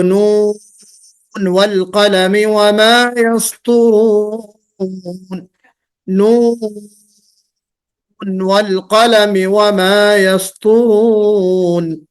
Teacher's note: نون ساکن ہے، واو متحرک ہے، یہ جو ہے یہ بھی شرط موجود ہے، ساری شرطیں موجود ہیں، لیکن ہم کیسے پڑھیں گے اس کو؟ نون والقلم نہیں پڑھیں گے، نون یعنی مد اور غنے کے ساتھ